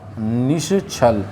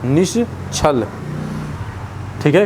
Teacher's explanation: देखिए, विसर्ग से पहले कोई स्वर आया, ठीक है, और विसर्ग के बाद छ आ गया तो विसर्ग बदलेगा श में